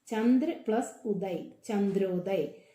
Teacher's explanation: ആ എന്നുള്ള ശബ്ദവും ഉ എന്നുള്ള ശബ്ദവും ചേർന്നപ്പോൾ ഓ എന്നുള്ള മാറ്റമാണ് ഇവിടെ വന്നിരിക്കുന്നത്.